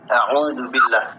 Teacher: Tapi makhorijul huruf di huruf ain itu ada di tenggorokan.